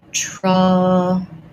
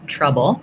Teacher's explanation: there's maybe a little schwa, a little O sound there between my B and my L · trouble has the schwa sound, first syllable stress. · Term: syllabic L